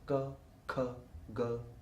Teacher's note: you say girl girl what happens in these cases is uh the air comes off and the root of the tongue comes in contact with the soft palate